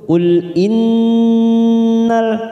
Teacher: nun yang bertasdid ghunah musaddadah kita tekan tiga ketuk. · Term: gunnah musaddadah